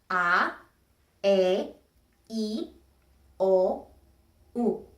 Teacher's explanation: Vowels in Spanish are different than vowels in English because they're short. They are all short. In English, you have a difference between long and short vowels. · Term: vowel sounds